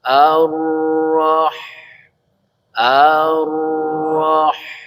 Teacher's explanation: Dari tengah tenggorokan itu maka keluarlah huruf ha.